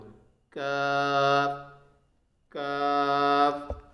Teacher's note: قاف، قاف کا مخرج زبان کی جڑ اور اس کے مقابل اوپر کا تالو، یعنی جو زبان ہے یا جو جیب ہے اس کی جو جڑ ہے اور اسی کے مقابل جو اوپر کا تالو ہے اسی سے ہی قاف نکلتا ہے۔ قاف، کاف، کاف کا جو مخرج ہوتا ہے زبان کی جڑ سے کچھ اوپر کا حصہ، زبان کی جڑ سے کچھ اوپر کا حصہ اور اس کے مقابل اوپر کا تالو۔